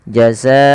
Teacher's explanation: Karena di sini ada bacaan namanya mad wajib muttasil, yaitu adanya mad yang disebabkan karena adanya hamzah yang terletak setelah huruf mad. Dan dia wajib kita panjangkan 4 atau 5 harakat